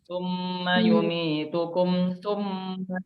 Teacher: Nah, cuman di sini yang saya mau tekankan di izhar syafawi di sini adalah membacanya secara jelas mim. Jadi tidak boleh kita tekan, tidak boleh kita dengungkan